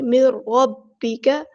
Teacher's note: مر ربک، یہاں پہ دیکھیں نون ساکن کے بعد را ہے، یہاں پہ ادغام ہو رہا ہے، مر ٹھیک ہے، ادغام بلا غنہ، ہم نے یہاں پہ غنہ نہیں کرنا، رکنا نہیں ہے